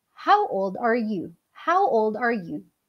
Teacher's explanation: Falling intonation kasi yung tanong na yon ay hindi na siya masasagot ng yes and no.